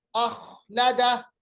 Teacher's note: خا کا مخرج ہے ادنا حلق، یعنی جو حلق کا پہلا حصہ ہے وہاں سے خا ادا ہو رہا ہے